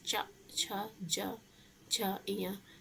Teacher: जो जीभ का पिछला हिस्सा कंठ होता है उसको छूता है। तालव्य व्यंजन होते हैं कि जब जीभ तालु को स्पर्श करती है